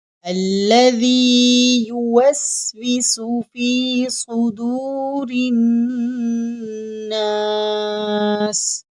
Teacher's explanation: اب یہاں ذال ہے، ذال کو پڑھنے کا طریقہ یہ ہے، ہماری زبان کی نوک سامنے والے دانتوں سے تھوڑی سی باہر رہے گی تو ذال ادا ہوگا، اور یہاں صاد حروف مستعلیہ میں سے ہے تو صاد کو ہم موٹا پڑھیں گے، اور یہاں را کے نیچے زیر ہے تو را کو ہم باریک پڑھیں گے۔